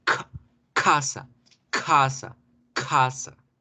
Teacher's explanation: Ya no decimos casa normal, deberemos hacer fuerza y explosión.